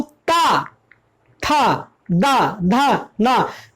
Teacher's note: जैसे मैं पढ़ता हूं ता, था, दा, धा, ना, तो जब मैंने ता था दा धा ना पढ़ा तो हमारी जो जीभ है ऊपर के दांतों को टच करती है